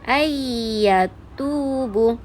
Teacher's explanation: Jadi nun tu, bunyi nun sakinah tu terus masuk ke dalam huruf ya. Jadi bunyi dia ayyatubu. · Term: idgham ma'al gunnah